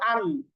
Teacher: তো দেখেন এই যে হামজা লাম জবর, লামকে যখন সুকুন দিয়ে উচ্চারণ করছি তখনই কিন্তু জিহ্বার গোড়ার কিনারা উপরের দাঁতের মাড়ির সাথে লেগে যাচ্ছে · জিহ্বার আগার কিনারা সামনের উপরের দাঁতের গোড়ার সাথে লাগিয়ে লাম। আপনি সুকুন দিয়ে উচ্চারণ করেন তাহলেই বুঝতে পারবেন যে লাম কিভাবে উচ্চারণ করা হচ্ছে।